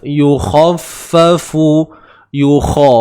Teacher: Kha tebal. Huruf isti'ala. Okey, tebal. Angkat pangkal lidah tu, naik pangkal lidah tempat pangkal lah.